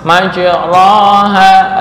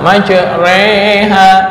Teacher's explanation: Bukan fathah, bukan kasroh. Ya, yang jelas condong ke kasrohnya lebih tinggi. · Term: imalah kubro